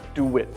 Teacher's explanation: There's a w sound sneaking in the middle there.